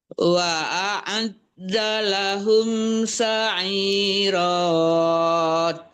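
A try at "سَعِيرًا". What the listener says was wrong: Sa'ira. Ra-nya 2 harkat aja, jangan berlebihan.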